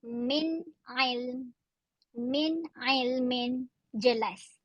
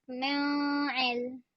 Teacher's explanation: Ilmin satu perkataan. Nun mati pada min itu bertemu dengan ain untuk kalimah ilmin. Bunyinya jelas, tidak dengung.